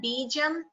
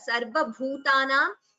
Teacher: the ba here, bijam, is alpa prana. So it should be chanted as alpa prana only. However, the bha here, sarva bhutanam, and here bhutam, there it is mahaprana